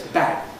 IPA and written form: bæk̚ (back)